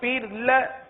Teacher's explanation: فر کی را کو باریک پڑھیں گے